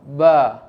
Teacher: Bibir atas bertemu dengan bibir bawah.